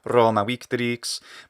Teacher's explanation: If you're saying it faster together, the ma would definitely be short.